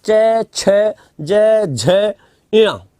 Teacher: तो पहले तीसरे में मुख से हवा कम निकल रही है। हाथ को कर लो और हाथ में जब हवा का जो वेग आएगा, किस में ज्यादा पड़ रहा है उससे पता लग जाएगा।